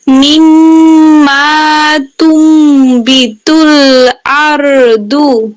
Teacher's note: নুন সাকিনের পরে বা আসছে ইকলাবের গুণা